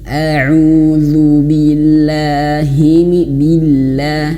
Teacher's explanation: la, awas, la-nya itu jangan sampai tebel ya. Kebanyakan dari teman-teman termasuk saya sendiri tidak sengaja dalam kalimat ta'awudz itu billah, la-nya itu tebel.